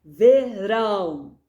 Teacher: Verão, rão é mais forte. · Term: sílaba tônica